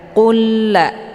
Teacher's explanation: Cara bacanya, lam sukun dileburkan ataupun dimasukkan ke dalam lam yang berbaris dengan cara ditekan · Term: idgham mislain